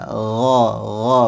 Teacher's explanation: Kalau ghain agak halus dan dia agak ke belakang. Kalau G agak ke depan.